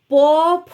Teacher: ঠোঁটের সাহায্য ছাড়া এটি উচ্চারিত হয় না প ফব অষ্ঠ ঠোঁটের সাহায্য নিয়ে উচ্চারিত হয় হলো অষ্ঠ বর্ণ